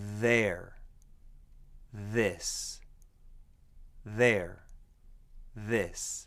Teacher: for the voiced version of this consonant all you do is add vibration of your vocal cords and use just a little less air